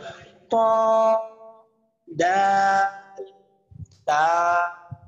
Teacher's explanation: জিহ্বার আগা সামনের উপরের 2 দাঁতের গোড়ার সঙ্গে লাগাইয়া